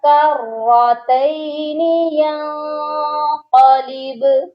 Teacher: با پر قلقلہ کریں گے، با ساکن ہے